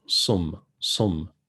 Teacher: you can hear like a slight whistle as you say sum, sum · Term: sad